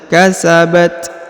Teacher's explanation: kemudian huruf ta kita hembuskan nafas sedikit ya kasabat Ini karena dia bersifat khams ya Ada hembusan sedikit hembusan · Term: Hames